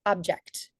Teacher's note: you could definitely hear the increase in loudness duration and Pitch when I pronounce that second syllable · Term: primary stress